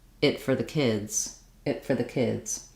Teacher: my T becomes an unreleased T and because I release into the F